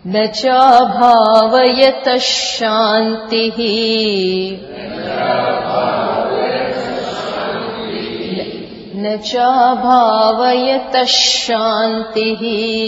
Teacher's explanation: After the, there is visarga. And visarga is followed by sha. So that visarga will become sha. Whichever sha comes, visarga turns to that.